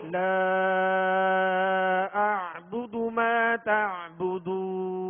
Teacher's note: عین کی جو ہے وہ آواز واضح کریں گے، اس کو جھٹکا نہیں پڑھیں گے بلکہ عین پڑھیں گے، اور اسی طرح ما تا عین کی آواز واضح کریں گے.